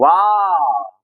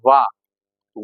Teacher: वाह को उच्चारण जो होगा दंत होष्ट से होगा, दंत भी रहेगा, मिक्स हो रहा होगा उसमें, वाह, वाह, मतलब कि दंत और होठ से क्या होता उच्चारण?